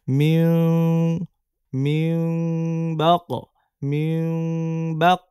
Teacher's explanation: মিম হবে কিন্তু নাকের মধ্যে চলে যাবে। মিউ, সামান্য মিমে চাপ দিবে। মিম বলে সরাসরি ঠোঁট চাপ দিবে না, তাহলে তো মিম হয়ে গেল, আসল মিম হয়ে গেল না।